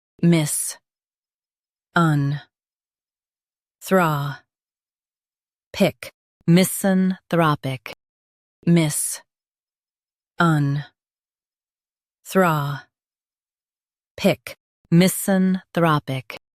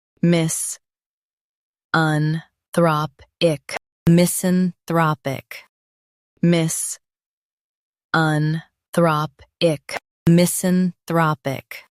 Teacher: Emphasize thra in US, throp in UK.